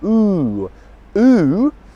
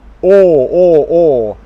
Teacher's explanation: ooh ooh is my mouth is almost completely closed mm or or the mouth is really wide open